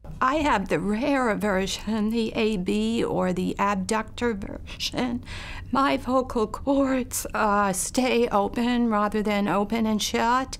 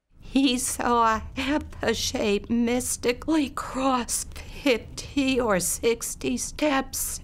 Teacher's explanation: her vocal folds snap open or remain open after she opens them for voiceless sounds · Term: breathy sort of voice